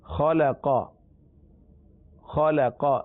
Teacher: خا اور قاف حروف مستعلیہ میں سے، لام مستعلیہ میں سے نہیں ہے، لہذا خا اور قاف کو پر پڑھنا ہے